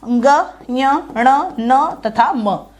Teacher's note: ये सभी 5वें अक्षर जो है वो नासिका से बोले जाते हैं। तो इन 5 अक्षरों के बारे में कभी पूछ ले कि इनका उच्चारण स्थान क्या है, तो सीधा आ जाएगा नासिका। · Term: पंचमाक्षर